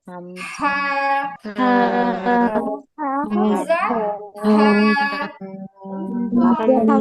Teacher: 1 number হচ্ছে কণ্ঠনালীর নিম্ন ভাগ থেকে হামজা, হা।